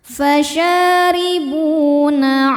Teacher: Bu hukumnya mad thbi'i zohiri. Sebab ada wau sukun sebelumnya dhammah. Cara bacanya panjang dua harakat. · Lai ada hukum harfulin karena ada ya sukun sebelumnya berharakat fathah. Cara bacanya cukup dilembutkan atau dilunakkan.